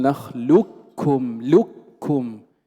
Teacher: الإدغام الكامل، أي ننطق بكاف مشددة. وكل هذا قد مر معنا أن نقول نخلكم لكم فلا يبقى أثر للقاف، هذا هو المختار عند جمهور القراء.